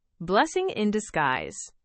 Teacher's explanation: So the in almost disappears.